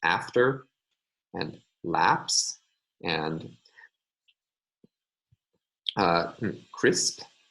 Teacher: There we all have instances of voiceless sounds going together.